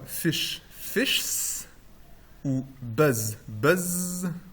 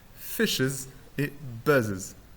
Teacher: une voyelle apparaît spécifiquement entre deux consonnes qui ont deux traits en commun la coronalité donc le fait d'être prononcé avec l'apex qui est vers l'avant